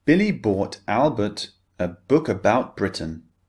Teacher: we're targeting the B sound, the voiced sound.